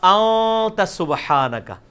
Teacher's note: اخفا اسے کہتے ہیں کہ خفی کر کے پڑھ رہے ہیں, نون پورا واضح نہیں کر رہے